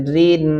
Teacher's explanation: یہاں پہ را باریک پڑھیں گے کیونکہ اس کے نیچے زیر ہیں